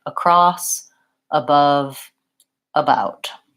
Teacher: the word across the letter a actually says vowel schwa